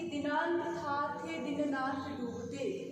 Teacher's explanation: दिनांत था थे दिननाथ डूबते, यानी कि यहाँ पर सारे दंत्याक्षर आए हैं।